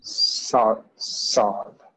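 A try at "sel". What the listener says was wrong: Sal, yes, sal.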